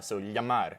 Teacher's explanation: in some dialects of Peninsula Spanish, they'll pronounce the double L in this word as y. So, yamar. And actually, in Italian, they still pronounce fio as fio.